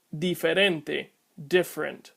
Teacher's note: The Spanish Ds, however, are dental, and the English Ds are alveolar.